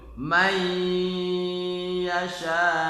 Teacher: Karena bertemu dengan huruf idgham bigunah berupa huruf ya, dibaca mai yasha dengan berdengung. Mai yasha itu ya, tidak boleh man yasha tapi mai yasha.